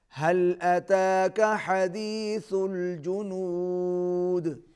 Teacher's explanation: کاف کو آپ نے باریک پڑھنا ہے